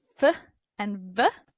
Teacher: Labiodental, meaning lip and teeth, f and v. Teeth and lips both involved.